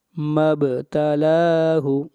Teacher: اذا مبتلاہ، با کے اوپر قلقلہ، لام کو کھینچ کر پڑھیں گے ایک الف کے برابر